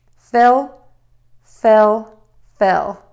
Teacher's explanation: making that short I short and a little more relaxed